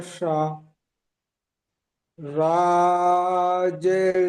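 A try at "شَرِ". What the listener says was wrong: সা বলে টান হবে না, সারি। শিন টান হয়ে যাচ্ছে, সারি। জলদি। সারি বলে সিন টান হয়ে যাচ্ছে, সারি। হ্যাঁ, যাবার তাড়াতাড়ি পড়বেন, সারি।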